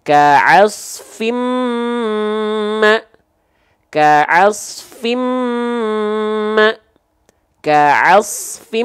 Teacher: pastikan dengungannya ditahan dua harakat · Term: kadar gunah